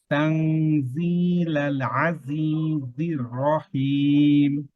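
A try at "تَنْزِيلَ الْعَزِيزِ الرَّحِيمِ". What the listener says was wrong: ভাই দেখেন তানজিলালে, আপনি কলকলা হরফ জানেন তাই না? তো তো কলকলা হরফের ভিতরে কি লাম আছে? লাম নেই। তাহলে আমি যদি বলি তানজিলালে, তাহলে কলকলা হয়ে গেছে না? এটা এখানে কি সিফাত আছে? এই সিফাতটা হচ্ছে কি তাওয়াসসুত।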